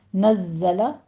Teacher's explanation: نزل میں زائی کے اوپر تشدید ادا کریں گے، سختی کے ساتھ آپ نے تھوڑی سی سیٹی کی آواز لے کر آنی ہے اور زا کو قوی آواز کے ساتھ پڑھنا ہے